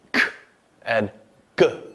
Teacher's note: they involve the tongue being raised against the soft palate